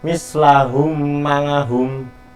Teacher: seperti menyuarakan mim yang bertasydid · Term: idgham syafawi